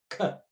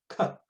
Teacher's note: The glottal and there's a little bit of resistance and then an explosion of sound forwards, which makes that k happen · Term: plosive